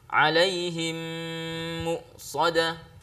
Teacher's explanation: Ya, jadi memasukkan mim pertama ke dalam mim kedua sehingga kedua mim itu menjadi satu mim yang bertasydid dengan tasydid yang agak lemah untuk mewujudkan gunnah. Ya, jadi mim yang pertama dileburkan ke dalam mim yang kedua lalu kemudian terwujud suara gunnah. Jadi ketika bertemu mim sukun dengan mim maka nanti bacaannya ada dengung. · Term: idgham mimi